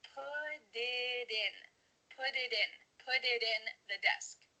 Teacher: instead of spending the time to let the air come out of your mouth your tongue is just tapping the top of your mouth